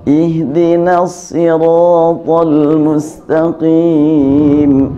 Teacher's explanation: Dan tebalnya ro bukan dengan bibir, tapi memang dengan rongga mulut yang dibantu dengan lidah. Ro yang tebal itu getarannya memang lebih lambat dibanding dengan yang tipis. Tapi tidak terlalu lambat jadi cadelnya enggak.